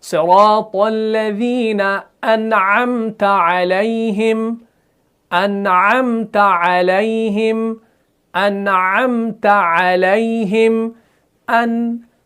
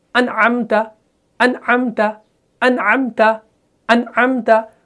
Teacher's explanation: हम इस नून को ज़्यादा नहीं खींचते और ना ही फ़ौरन आवाज़ बंद करते हैं।